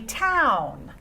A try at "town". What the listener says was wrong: Use a little bit more volume, a little bit more energy in your voice.